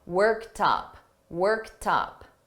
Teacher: when I combine it with worked up, I'm going to link these together and you're going to hear that T in front of up.